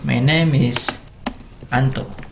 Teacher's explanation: Sementara di is adalah I adalah huruf vokal, jadi hidup. M bertemu dengan I jadi miss.